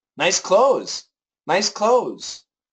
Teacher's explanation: the Z is a strong sound and the th is a weak sound and it is possible to cancel the th